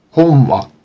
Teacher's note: the N sounds like a nasalized W, anticipating the following non-nasal W.